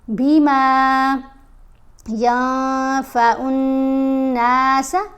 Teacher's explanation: نون احفا یعنی نون کی آواز کو واضح کر کے نہیں پڑھتے، نون کی آواز کو ناک میں چھپا کر پڑھنا ہوتا ہے. احفا اس کو کہتے ہیں.